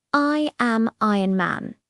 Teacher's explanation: He doesn't just say the words, he emphasizes I and Iron Man. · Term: stress and intonation